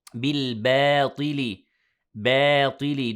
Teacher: Don't make the ba heavy because of the heaviness of the ta. يعني don't say بالباطل ba.